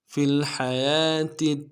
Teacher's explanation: ساتھ ملانا ہے، لام میں غنہ نہیں ہوگا، لام ساکن ہے، ہا کو گہرائی سے ادا کریں گے